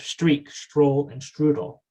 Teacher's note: We have the posterior fricative sh rather than the anterior fricative.